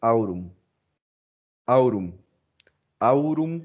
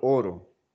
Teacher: Cambio la A, U por la O. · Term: monoptongación